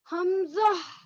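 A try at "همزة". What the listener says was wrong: हम हमको मोटा नहीं करेंगे, हमजा,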